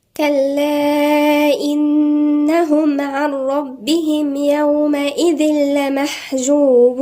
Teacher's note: لأن حرف المد جه في آخر الكلمة الأولى والهمزة أتت في أول الكلمة الثانية، فسمي مد منفصل يمد 4 حركات. إنهم هنا في حرف غنة مشدد عند النون، غنة بمقدار حركتين.